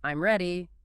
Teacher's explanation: If you say it with a falling tone, I'm ready, it's a statement, >> but if you say it with a rising tone, I'm ready, it becomes a question even though the words are identical.